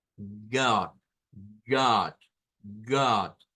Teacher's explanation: no es una a abierta hacia delante no es una a frontal es una a retrocedido en nuestra boca